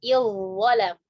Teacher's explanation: Jadi bukan iz-zalam, tapi langsung masuk ke huruf dha, langsung ditebalkan. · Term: Idgham kamil